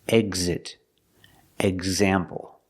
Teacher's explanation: Here the X makes the gz sound with a voice. G, z, together, gz.